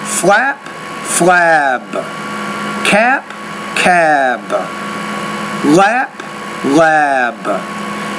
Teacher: there is vibration here and here's what you want to remember when a word ends in a voiced consonant sound the vowel which precedes it should be longer